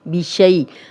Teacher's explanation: اب جزم والی یا، پیچھے شین پہ زبر، یا لین ہے، نرمی سے پڑھیں گے، لمبا نہیں کریں گے